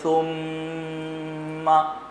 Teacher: تو یہ غنہ یعنی گنگنی آواز میں پڑھنا، ناک میں آواز کو چھپا کر پڑھنا۔